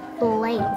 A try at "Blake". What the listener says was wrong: You don't pronounce the E at the end.